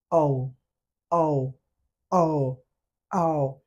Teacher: ও sound create করার সময় দুইটা ঠোঁট বৃত্তাকার হয়ে যাবে।